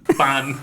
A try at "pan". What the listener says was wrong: Ban. He's putting like a B in there. Bone. It's not a bone. pan.